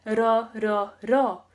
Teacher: the ryul in the middle sounds a lot like a tapped Spanish R. But instead of going I just want you to tap it literally off the roof of your mouth and try saying the D sound.